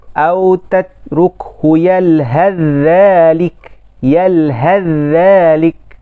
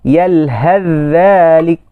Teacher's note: Bacaan dia idgham secara kamil. Yakni huruf yang pertama terus hilang. Terus hilang bunyinya. Hanya tinggal pada tulisan saja.